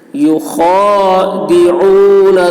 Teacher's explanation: خا کی آواز موٹی ہوگی